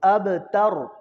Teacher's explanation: را ساکن ما قبل فتح ہے، ما قبل زبر ہے، تو یہاں پہ را موٹی ہوگی